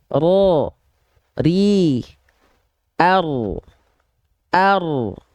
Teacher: ujung lidah disentuhkan ke langit-langit dia langit-langit ke arah langit-langit yang depan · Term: inhiraf